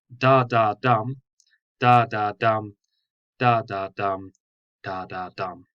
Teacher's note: there are 2 unstressed syllables and 1 stressed syllable, and it repeats that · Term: anapestic tetrameter